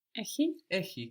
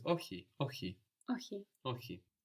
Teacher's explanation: It's more like a H, no? Less friction.